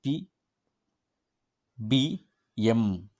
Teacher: பி, பி, எம். இந்த pronounce பண்ணும்போது ரெண்டு மேல் அப்பர் லிப்பும் லோயர் லிப்பும் பார்த்தீங்கன்னா ரெண்டுமே என்ன பண்ணுது? அது வந்து கனெக்ஷனில் இருக்குது. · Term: பைலேபியல் சவுண்டு